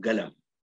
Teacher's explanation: بعض الدول مثلا تقلبها قاف شجرية